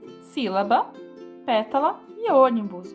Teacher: aqui o si da sílaba é o mais forte e o pé de pétala é mais forte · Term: proparoxítona